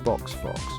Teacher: notice how the X at the end of these words sounds like KS · In English X can sound like KS as in box or Fox